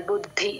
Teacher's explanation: బు కి మహాప్రాణం పెట్టేస్తారు గమనించుకోండి ఓన్లీ ద కి పెట్టాలి